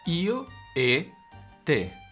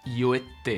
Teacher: con la T geminada, la T doble